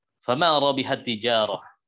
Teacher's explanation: Ada huruf ta bertemu dengan huruf ta juga. Ya. Ini terjadi proses idgham.